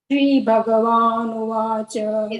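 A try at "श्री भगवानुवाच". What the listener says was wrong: The Shri is Dirga. So you have to little drag. Shri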